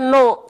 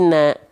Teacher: huruf nun ini berarti huruf tipis ya, karena dibacanya bukan no ketika fathah, tapi na.